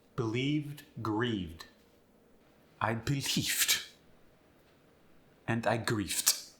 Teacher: V goes to the f